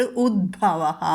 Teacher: ഉദ് ത മാറിയിട്ട് ദ വരും, മൃദുവായത് കേട്ടോ, അത് ശ്രദ്ധിക്കണം.